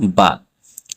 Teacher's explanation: বা হরফটি ঠোঁটের ভিজা জায়গায় উচ্চারিত হবে